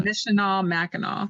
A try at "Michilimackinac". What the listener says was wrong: Michila. Yeah, I think you're putting an N where the L is. Michilimackinac.